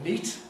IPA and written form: niˑt (neat)